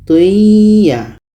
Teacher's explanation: tanwin masuk ke ya dan ada dengung. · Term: idgham bi gunnah